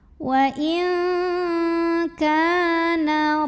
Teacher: nun sukunnya dibunyikan samar-samar disertai dengungan. Jadi artinya nunnya tidak jelas n, melainkan disamarkan siap-siap menuju kaf. Dan dengungnya besar. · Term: ikhfa ab'ad